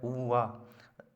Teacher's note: ऊपर के दांत, नीचे के होंठ, दंतोष्ठ